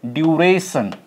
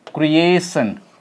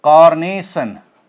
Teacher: they all have their primary stress on second syllable